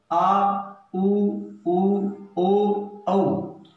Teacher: पश्च स्वर, जीवा का पिछला भाग सक्रिय रहता है, यानी उच्चारण करते समय जीवा का जब पिछला भाग सक्रिय रहता है उनका नाम दिया गया है पश्च स्वर।